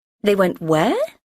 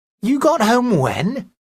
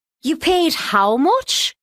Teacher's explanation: these are statements uh but they are said in rising intonations at the end